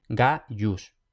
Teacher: Por ejemplo tenemos Gaius, tenemos la I entre la A y la U, por tanto esa I no es una vocal sino una semiconsonante